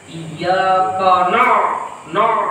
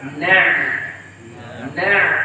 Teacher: Menebalkan huruf nun pada iyaka na'budu akibat pengaruh huruf kaf sebelumnya yang sudah dibawa tebal.